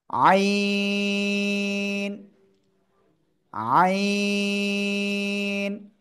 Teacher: আইন ঠিক আছে এই আইন অক্ষরটা কোন জায়গা থেকে উচ্চারিত হয় এই আইন অক্ষরটা উচ্চারণ হবে গলার মধ্যখান থেকে চার আলিফটা নিয়ে উচ্চারণ করতে হবে · গলার মধ্যখান থেকে চার আলিফ টানে উচ্চারণ করতে হবে আইন কোন বাতাস বের হবে না